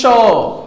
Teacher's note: बड़े वाले स का जीभ जाके तालु में टकराता है, जैसे बोलेंगे श।